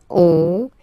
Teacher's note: Final S not pronounced, and then when you get this ON combination, you get this nasal on, really in your nose